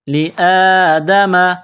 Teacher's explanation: اس کو کڑا زبر کہتے ہیں، 1 الف کے برابر کھینچ کر پڑھیں گے